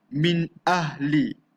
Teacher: Bacanya jelas, nyata dan terang tanpa dengung.